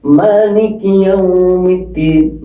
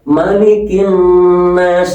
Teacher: Ini ma-nya panjang. Kalau yang Malikin Nas itu ma-nya pendek.